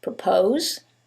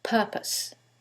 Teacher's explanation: in the first one, it's the second syllable that's stressed, and in the second one, it's the first syllable, and that changes the pronunciation completely.